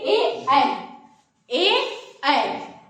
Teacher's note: इसका जो उच्चारण स्थान होता है कंठ और तालु दोनों से मिलकर होता है